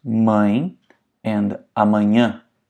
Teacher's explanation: The tilde makes the vowel nasal. Air has to come out of your nose as you're saying it.